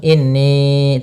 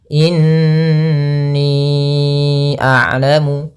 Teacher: Nun berharakat tasydid ini kita namakan dengan bacaan gunnah, yaitu suara nunnya harus ditahan dengan 2 harakat dulu baru dilepas. Jangan langsung inni, tapi tahan dulu.